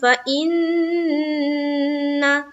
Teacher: نون مشدد کا غنہ کریں گے